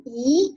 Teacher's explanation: 二声，二声怎么说呢？向上扬读咦啊